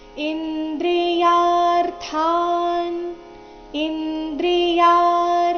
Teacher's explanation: ಯ ಆದ ನಂತರ ಅರ್ಧ ರಕಾರ ಮುಂದೆ ಥಾನ್ ಥ ಮಹಾಪ್ರಾಣ ದೀರ್ಘ ಮುಂದೆ ಅರ್ಧ ನಕಾರ